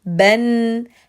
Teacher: نطقت حرف الباء بالفتحه الاولى وزدت لها نون بالسكون